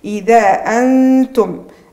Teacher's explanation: عندي نون ساكنة كذلك بعد حرف التاء كما شفناها، عندي الإخفاء مع إبراز الغنة